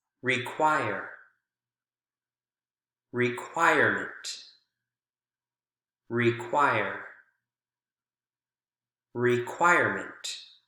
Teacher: No change, still on the choir sound, or the choir syllable.